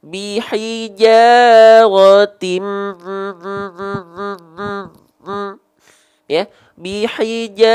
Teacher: gunnah itu akan sangat erat, tidak akan terlepas dari rongga hidung atau al-khayshum